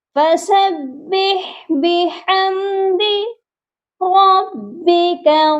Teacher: اس word میں 2 ہا ہیں، فَسَبِّحْ اور 1 ہا بِحَمْدِ اس کا ہے، دونوں ہا درمیان والے حلق سے پروناؤنس ہوں گے